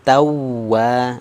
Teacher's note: Nah, lalu kana tawwa. Nah, ini ada huruf waw tasydid, berarti dia nabrah, berarti suaranya sedikit terangkat.